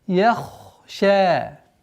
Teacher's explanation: Здесь обратите внимание. Я мягкая, ха твердая, шин мягкая. И таким образом, мягкий, твердый, мягкий. С мягкого на твердый уходим.